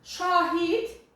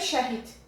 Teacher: A-ın əyə keçməsinə görə dəyişdi